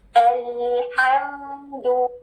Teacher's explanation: अल्हम्दु, और दू के लिए क्या करना है? Complete rounding ऑफ द lips और डबल ओ साउंड